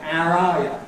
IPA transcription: æər ˈɑː jə